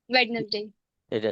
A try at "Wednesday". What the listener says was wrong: जी, ये वेडनेसडे मत बोलना इसको बच्चों. This the correct pronunciation of this word is वेंसडे.